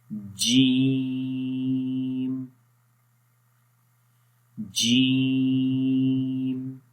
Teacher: جیم کا مخرج ہے زبان کا درمیان والا حصہ جب تالو کے درمیان والے حصے کے اوپر ٹچ کرتا ہے، اس کو وہ ملتے ہیں آپس میں، تو اس وقت جیم ادا ہوتا ہے۔